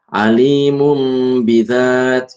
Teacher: Ya, cara bacanya mengubah huruf nun menjadi mim disertai dengan dengung sekadar 2 ketukan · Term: iklab